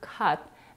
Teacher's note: It's the verb cut that is pronounced with the mid-central vowel, also known as the cup sound